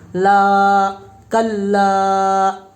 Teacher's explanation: الف سے پہلے زبر الف مدہ ہوگا اس لیے الف مدہ کو ایک الف کے برابر کھینچ کر پڑھیں گے